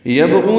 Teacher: یبغون میں با ساکن پہ قلقلہ ہے، غین پر ہے، غو واو مدہ ہے، یہ دو حرکات لمبا کریں گے۔